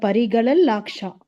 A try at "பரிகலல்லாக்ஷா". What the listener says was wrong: பரிகல அப்புறம் ஒரு இல்லு தான். இந்த இத்துங்கிறது வந்து சேரும் பொழுது பரிகலத் லாக்ஷான்னு இருக்கு. அது சேர்த்து சொல்லும் போது பரிகலல் லாக்ஷாரச அப்படின்னு வரும்.